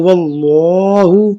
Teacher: لفظ اللہ سے پہلے کیا زبر ہے اسے لفظ اللہ کو کیا کرنا موٹا پڑھنا ہے